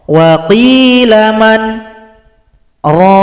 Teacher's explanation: Jadi setelah baca man tahan nafas, kemudian baru baca raqa.